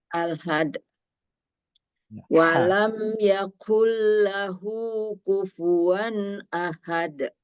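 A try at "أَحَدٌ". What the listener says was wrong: Masih kurang Bu. Masih ha besar. Masih pangkal. Coba masukkan ke tengah. Atau Ibu latih bunyi ini.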